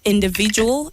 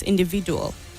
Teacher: the D at the end at the last syllable takes the sound J and not D